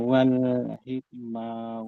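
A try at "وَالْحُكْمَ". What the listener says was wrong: Wal hukma Pak, pakai dhamma. Wal hukma.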